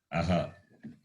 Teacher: To the letter, to the vowel a, Visarga is added and it is pronounced as aha.